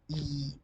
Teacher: It occurs on front part of the tongue. So it is called front vowel.